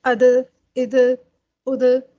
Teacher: تو جب بھی ہم دال ساکن کو پڑھیں گے تو دال ساکن میں آواز جو ہوگی وہ دال کے مخرج میں پلٹے گی، جنبش کرے گی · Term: صفت قلقلہ